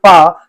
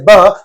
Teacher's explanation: Pa is a voiceless sound and ba is a voiced sound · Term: voicing